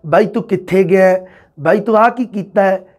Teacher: ਅੰਤਿਮ ਅੱਖਰ ਨੂੰ ਐ ਬੋਲਣ ਦੀ ਜਿਆਦਾ ਰੁਚੀ ਹੈ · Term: ਐ ਸਵਰ